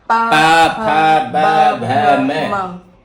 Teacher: और पैवर्ग ओठ के स्पर्श से ही ये पैवर्ग का उच्चारण होता है।